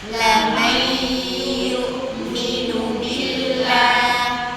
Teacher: Saat may itu agak sengau suara kita. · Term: idgham dengan gunah